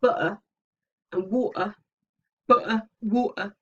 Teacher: you have constricted the glottis you have stopped the air from leaving by constricting the glottis